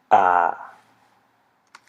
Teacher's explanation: You open your mouth wide. This is an open front unrounded vowel.